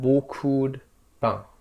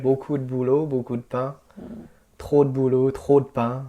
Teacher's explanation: it almost sounds like we're saying beaucoup de, like you have a D at the end of the word. Yeah, it sounds like it's that D is part of the word that came before it.